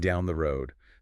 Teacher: the final D in road can be softened or almost dropped like another stop consonant. Yeah, final T and D sounds often get reduced or unreleased in casual speech, especially before a pause.